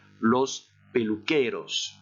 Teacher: c'est l'avant-dernière syllabe qui porte l'accent tonique